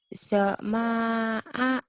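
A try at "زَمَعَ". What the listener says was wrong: Zama. Zama'a. Nggak ada yang panjang.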